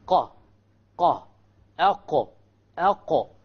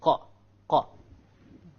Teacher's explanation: This is the makhraj of the qaf, connecting the innermost part of the tongue, which is right above the throat. Right above the throat, okay?